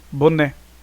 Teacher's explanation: Você observa qual é a sílaba tônica. Aqui é o né, a última.